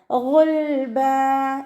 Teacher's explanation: ഗൈനിൻ്റെ മഖ്റജ് അദ്നൽ ഹൽക്കാണ്. നമ്മുടെ തൊണ്ടയുടെ ആദ്യ ഭാഗം. സൗണ്ടിനെ അയിനായി പോവാതെ ശ്രദ്ധിക്കുക.